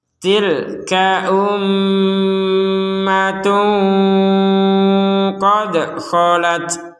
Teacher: mim bertasydid kita dengungkan 100%